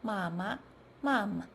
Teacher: In fast speech, the vowel in a neutral tone syllable changes to a short central sound